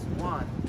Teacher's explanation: and the fourth tone going down